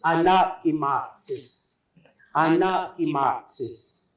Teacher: all these words that I'm using, they have the G sound in there, the K is the G sound